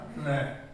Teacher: र का जब हम उच्चारण करते हैं तो हमारी जीवा जो है 2-3 बार कंपन करती है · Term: प्रकंपित व्यंजन